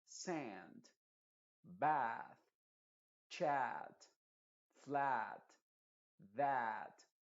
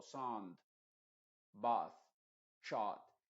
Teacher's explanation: la resonancia está en la parte de adelante, no está en la parte de atrás. Porque si yo digo, por ejemplo, sound, bath, shot, es porque la lengua la tengo muy atrás